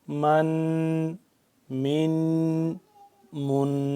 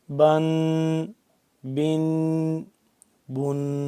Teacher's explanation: اس کی آواز کو تھوڑی دیر ناک میں لے جا کے پڑھنا ہے اور تھوڑی دیر ٹھہراؤ کرنا ہے۔ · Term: تنوین